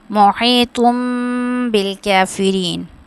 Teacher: اب یہاں پہ غنہ کریں گے کیونکہ تنوین کے بعد با آ رہا ہے تو اقلاب کی صورت میں غنہ ہوگا.